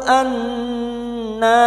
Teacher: Kita lunakkan huruf linu an nun yang bertasdid ghunna musyaddadah. Kita dengungkan selama tiga harakat.